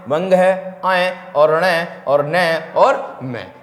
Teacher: यानी कि ये जो व्यंजन होते हैं आपके नासिकीय व्यंजन कहलाते हैं, क्योंकि ये नाक से उच्चारित होते हैं।